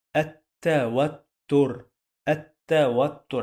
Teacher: When we add l to any word starts with ta, we drop the l, which is lam in Arabic. Again, when we add l, which means the in Arabic, we drop this lam, we don't pronounce it when we add it to any word starts with ta, the one that sounds like t.